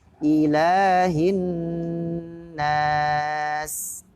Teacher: Nun tasdid sama dibaca dengung ditahan. Ilahin nas, tidak langsung dibaca harokat nun tasdid.